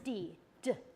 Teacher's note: so there's a little bump they're called your alveolar Ridge and you put your tongue on that alveolar Ridge and you kind of tap your tongue on that Ridge and you turn your voice on